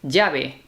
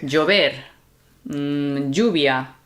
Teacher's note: So here in Spain, although sometimes you'll hear the double L in other pronunciations as a Y, here it tends to lean toward a J sound, the J, but not a hard, super hard J, although it can be, depending on the moment.